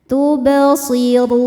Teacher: Ro dibaca tafhim karena harakatnya di atas damah maka bacanya tebal. · La tub ba sukun hukumnya qalqalah sugro karena huruf ba sukunnya sukun asli dan ada di tengah-tengah bacaan. Cara bacanya dipantulkan dengan pantulan yang kecil.